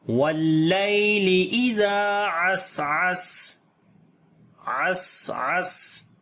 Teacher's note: الجوار الکنس واللیل اذا عسعس، واللیل اذا عسعس، واللیل، یا یہاں پر لین نرم پڑھیں گے، ازال کو لمبا کریں گے، الف مدہ ہے، دونوں سین کے اوپر صفت صفیر اور ہمس آ جائے گی اور عین کو گلے کے درمیان والے حصے سے پڑھیں گے